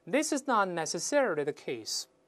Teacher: 大家注意这个 necessarily 又是重音后移